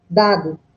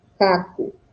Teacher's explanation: Em vez de ela falar dado, ela vai sair caco, porque o que ela vai conseguir bater é o fundo da língua e não a ponta da língua, porque a ponta da língua está para baixo.